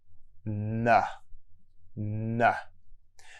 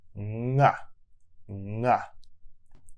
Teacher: With the n sound, you block the air in your mouth with the front of your tongue. N, n. With the ng sound, you block the air in your mouth with the back of your tongue.